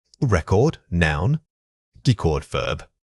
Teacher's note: The stress moves from the first syllable to the second.